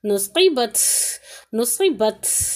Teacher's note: جو تا پر ہے نا، یہ اس کی جو صفات ہیں، جو تا کی صفات ہے، اس میں یہاں پر ہوا کا نکلنا محسوس ہونا چاہیے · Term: ہمس